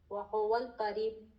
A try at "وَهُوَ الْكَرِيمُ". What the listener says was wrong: ہم کاف کو کیوں گلے سے نکال رہے ہیں؟ وَهُوَ الْكَرِيمُ. سمپل, اب کوئی بھی اس میں مخرج نہیں سوائے ہا کا. کریم کو بالکل مخرج گلے سے نہیں نکالنا, سمپل.